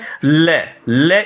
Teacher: हवा अगल बगल से आती है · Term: पार्श्विक